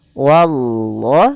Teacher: Pada lafal wallah, hati-hati jangan menebalkan wawnya, tapi dia tipis. Wallah, baru Allahnya tebal.